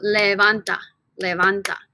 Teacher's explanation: it ends with a vowel therefore our natural accent is right here on the second to the last syllable